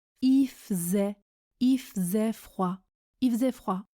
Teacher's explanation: Il se prononce i, je ne prononce pas le L quand je parle vite, et faisait se prononce faisait, il faisait froid, il faisait froid.